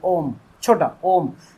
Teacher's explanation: ओ की ध्वनि आ रही है। अ के बाद ओ की ध्वनि आ रही है। ओ बहुत छोटी है।